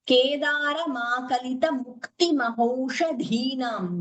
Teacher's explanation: Dha is Mahaprana, no splitting in the middle.